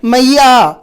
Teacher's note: इस प्रकार के चिन्ह आप लोगों ने देखे होंगे, यानी कि शब्द जो है इसका उच्चारण समाप्त नहीं हुआ है, मैया, यानी कि या जो है वो चलती रहती है कितनी भी देर तक। और इसी प्रकार से यह जो चिन्ह है एस जैसा जो चिन्ह हमें प्रतीत हो रहा है, यह प्लुत स्वर को ही इंगित करता है।